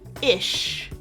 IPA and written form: ɪʃ (Ish)